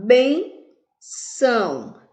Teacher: Vejamos que o bem subiu, o são desceu. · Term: paroxítona